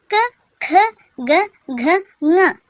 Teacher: ಕ, ಖ, ಗ, ಘ, ङ ಇವುಗಳನ್ನ ನಾವು ಕಂಠ್ಯ ಅಂತ ಕರಿತೀವಿ. ಯಾಕೆಂದ್ರೆ ಕಂಠದ ಸಹಾಯದಿಂದ ಇವುಗಳನ್ನ ನಾವು ಉಚ್ಚಾರ ಮಾಡ್ತೀವಿ